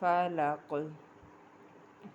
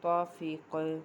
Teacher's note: فا زبر فا، لام زبر لا، فلا، قاف زیر قی، فلاقی، آگے وقف، فلق، قاف حروف قلقلہ میں سے ہے، وقف کی صورت میں قاف ساکن ہو جائے گا اس لیے یہاں پر قلقلہ ہوگا